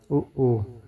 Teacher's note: उ ऊ का उच्चारण ओष्ठ यानी ओठ घोष और अल्पप्राण है।